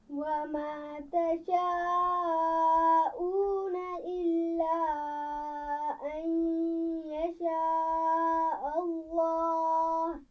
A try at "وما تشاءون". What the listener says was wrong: وما تشاء، یہ بھی بڑی مد ہے، جیسے آپ نے یشاء اللہ کی مد کو کھینچ کر پڑھا ہے، اسی طرح تشاء اس کو بھی کھینچ کر پڑھیں گے.